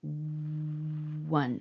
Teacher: well that's a letter O but when I say w one the first thing coming out of my mouth is a w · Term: consonant sound